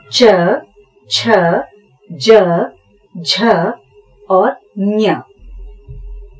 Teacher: जो उच्चारण स्थान है वो है तालु के आगे वाला हिस्सा। इसमें आते हैं च, छ, ज, झ और ञ।